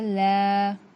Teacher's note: लाम, जुबान के किनारे को साइड के दांतों को लगाने से लाम अदा होता है। लाम के ऊपर खड़ा जबर बराबर है हुर्फ मद्दा के, थोड़ा खींच कर पढ़ेंगे। लाम खड़ा जबर ला।